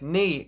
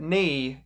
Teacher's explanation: Flemish maintains more pure vowel sounds, whereas Netherlandic Dutch tends to make single vowels into diphthongs.